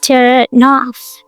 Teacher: The end from turn slides into off with no pause. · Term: linking